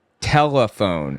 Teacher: I'm saying the L with the back of my throat. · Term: dark L's